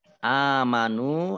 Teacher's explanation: Alif fathah berdiri Mad Thobi'i Nun dhomah Thobi'i masing-masing dibaca panjang 2 harokat